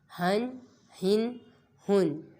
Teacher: ہا کو حلق کے درمیان والے حصے سے ادا کریں گے